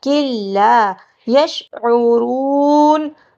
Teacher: لا نہیں پڑھنا، کاف کو لام سے ملانا ہے، کلا یشعرون، عین کو حلق کے درمیانی حصے سے ادا کریں گے ، را کو پر موٹا کر کے پڑھا جائے گا اور